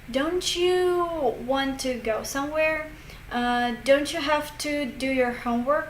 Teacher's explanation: that T becomes like CH sound